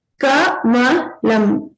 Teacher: Ka is a alpa prana, which means that you use less force to pronounce it. And Ka is short and Kha is a mahaprana.